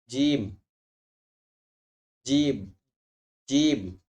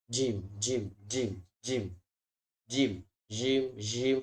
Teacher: sifat dari jim ini adalah jahar, jadi dia tidak menimbulkan hembusan udara